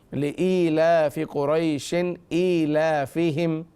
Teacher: یہاں شین 2 زیر شن پر غنہ نہیں کریں گے کیونکہ اگلا جو حرف ہے وہ حمزہ ہے، اور نون ساکن اور تنوین کے بعد اگر حروف حلقی میں سے کوئی حرف آ رہا ہو تو وہاں غنہ نہیں ہوگا۔